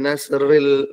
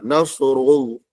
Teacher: ra tafhim, iaitu ra dibaca tebal, tafhim baca tebal